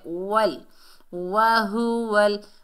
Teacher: واو کو لام سے ملائیں گے، جزم والا حرف ایک مرتبہ پڑھا جاتا ہے